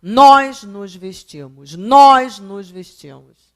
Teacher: Os dois são monossílabos, os dois têm uma sílaba só que o primeiro é tônico, nós. O outro é nós, é átono.